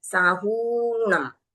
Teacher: दीर्घ ऊ की मात्रा है, रस्व नहीं है, इसके लिए हमको बोलते समय उसको थोड़ा लंबा लेना है